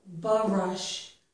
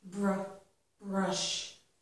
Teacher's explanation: When we have the R right after another consonant, two consonants together, it's important not to put a vowel sound in there. Okay, so don't say something like b-rush.